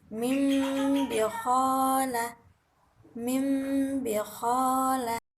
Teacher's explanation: bawah dengan huruf a di bibir bawah tersebut posisinya tertutup dan diiringi dengan suara yang berdengung kurang lebih dua harokat